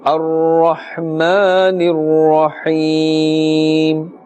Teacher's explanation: ya sakin has a kasrah before it, and therefore we are pulling a little up to one alif because this is ya madda.